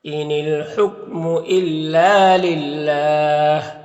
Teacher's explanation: इल्ला में अलिफ मद्दा है, एक अलिफ के बराबर खींचेंगे। यहाँ पर अल्लाह के लाम से पहले लाम के नीचे ज़ेर है तो अल्लाह के लाम को बारीक पढ़ेंगे